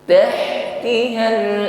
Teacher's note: huruf ha sukun Hames ada nafas yang mengalir